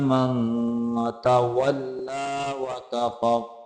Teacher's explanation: तवल्ला लाम को लंबा करके पढ़ेंगे